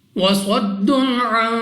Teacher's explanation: یہاں پر ہمارے پاس صاد مستعلیہ میں سے ہے، موٹا پڑھنا ہے منہ اور آواز کو کھول کر۔ 2 پیش کی تنوین کے بعد عین حروف حلقی میں سے ہے، اظہار کا قاعدہ ہے، بغیر غنہ کے پڑھیں گے۔